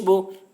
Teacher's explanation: با کے اوپر پیش ہے، پیش کو جلدی پڑھیں، تھوڑا بھی نہ کھینچیں، معروف پڑھیں، مجہول آواز سے بچیں